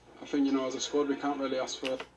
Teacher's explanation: his accent is also quite nasal. And you'll find that in Manchester, it can be quite a nasal accent.